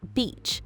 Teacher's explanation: The EA in beach makes a long E sound, like in see or we.